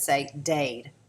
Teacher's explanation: the child could say Dade for Cade instead of Tade for Cade because of that proximity of that D sound at the end of the word